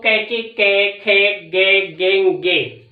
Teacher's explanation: ये सारे कंठ से बोले जाते हैं